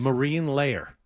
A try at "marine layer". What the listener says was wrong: You're giving it an extra syllable.